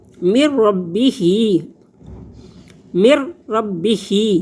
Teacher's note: ہاں کھڑی زیر ہے، اس کو 1 الف کے برابر لمبا کریں گے